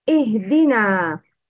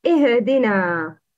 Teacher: Make sure to pronounce ha with sukun without kalkala.